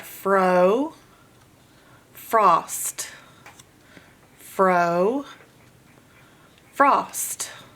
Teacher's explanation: O to ah, O to ah. The O changes from long sound O to short sound ah just by closing it in with another consonant.